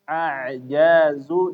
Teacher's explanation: Jadi ketika mengucapkan huruf ain antara tidak mengalir tapi mengalir sedikit ya. Kayak nggak mengalir tapi ngalirnya sedikit. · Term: Bainiyah